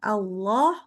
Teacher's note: membaca Allah maka Allah itu lamnya tebal. Nah, cuman hati-hati bacanya harus tetap A ya.